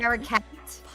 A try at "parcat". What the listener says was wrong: Yeah, too many syllables. It is parakeet and cat together.